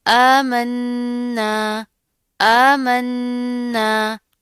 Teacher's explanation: جما کر پڑھیں گے، ساتھ کا الف بھی پڑھا جائے گا، پہلے غنہ کریں گے اور پھر ساتھ کا الف پڑھا جائے گا